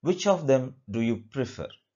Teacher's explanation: it is the falling intonation